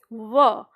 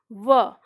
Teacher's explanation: व का उच्चारण स्थान है ऊपर के दांत नीचे का होठ। · तो आप उच्चारण करके देखो, व, तो व बोल रहे हैं तो ऊपर के दांत और उनके नीचे होठ नीचे का, तो इसलिए इसको नाम दिया गया दंतोष्ठ, यानी दांत और होठ दोनों के मिलने से इसका उच्चारण होता है